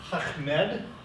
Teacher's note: Arabic names are always fun because you have to do a guttural sound in the back of your throat